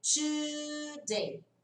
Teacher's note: Quando a gente fala today, a gente coloca, na verdade, um som de CH no inglês. Esse som de tsh, no inglês é o CH.